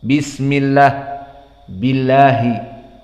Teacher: Adapun lafdzul jalalah Allah muraqqaqah dibaca lah di saat dia sebelumnya kasrah